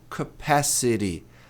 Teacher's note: Por isso que eu pus um T, um R aqui meio sobrescrito, para indicar que é um T que tem um som de re, como em garagem, garapa